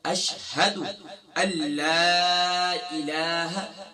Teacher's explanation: اب اکثر کیا پڑھتے ہیں اشہد، اشہد نہیں ہے، کیا ہے اشہد اللہ الہ، اکثر پڑھتے ہیں ان لا الہ، یہاں نون جو ہے یہ سائلنٹ ہو جائے گا، حمزہ کو لام سے ڈائریکٹ جوائن کریں گے، یہاں نون تو لکھا ہوا ہے لیکن نون پڑھنے میں نہیں آئے گا، حمزہ لام زبر ال، لام الف زبر لا، اللہ۔